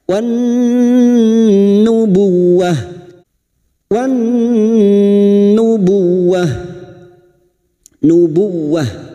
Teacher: masuk ke huruf waw yang bertasdid, hanya masuk tanpa ditahan lama-lama. Buwah, tak marbutah ini yang dibaca waqaf, maka menjadi sukun bunyinya nubuwah. · masuk pada huruf nun yang bertasdid dan mendengung selama 3 harokat. Wan nubuwah, wan nubuwah masuk ke huruf waw yang bertasdid, hanya masuk tanpa ditahan lama-lama.